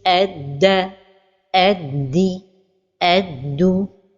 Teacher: Here we have the letter dal with shadda and the vowel fatha, and here the letter dal with shadda and the vowel kasra, and here the letter dal with shadda and the vowel dhamma. The mistake when pronouncing the letter dal with shadda and a vowel is to change the sound of the letter to the sound of the letter ta